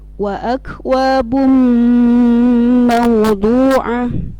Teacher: tanwin doma bertemu huruf mim, maka suaranya didengungkan dan ditahan. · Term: idgham ma'al gunnah